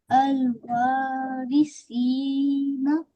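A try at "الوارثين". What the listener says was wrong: Very well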